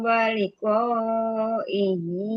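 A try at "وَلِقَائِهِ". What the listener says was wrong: Waliqa'ihi fahabitat a'maluhum. Nah, hinya tadi liqa'ihi tadi inya kepanjangan. Tadi karena pertama ragu-ragu di mana mau wakaf ya. Jadi memaksakan nafasnya jadi waliqaihi. Nah, tadi ini jadi kepanjang, jadi ke bawah panjang. Karena tadi ragu-ragu.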